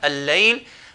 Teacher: lam is going to merge with this following lam